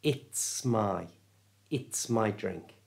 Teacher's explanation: the S is acting like a magnet and pulling the my in towards it